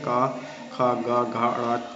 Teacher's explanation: कंठ से बोले जाते हैं, इसलिए कंठस्थ व्यंजन कहलाते हैं